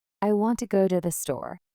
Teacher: In this sentence, want and store are stressed and the other words are said quickly and softly.